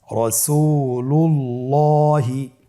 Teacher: আল্লাহ শব্দের দ্বিতীয় লামের আগেই এখানে একটি পেশ রয়েছে, এই জন্যে দ্বিতীয় লামটিকে পোর করে পড়তে হবে